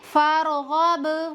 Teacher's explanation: غین حروف مستعلیہ میں سے ہے، اس کو موٹا کر کے پڑھیں گے، زبان کی جڑ اوپر کے تالو کی طرف اٹھائیں گے اور منہ کے اندر ہوا بھر کر پڑھیں گے